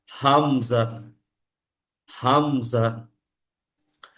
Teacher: মানে কন্ঠের শুরু থেকে উচ্চারণটা হবে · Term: হামজার উচ্চারণ